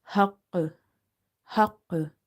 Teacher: In that case, the qalqala in the qaf will be strongest.